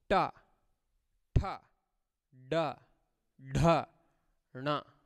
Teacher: For pronouncing the whole row, if this is the this is your upper teeth and lower teeth, upper part of the mouth and lower part of the mouth, you have to keep your tongue little back. Ta, tha, da, dha, na. The tongue needs to be twisted and kept on the back side of the upper palate.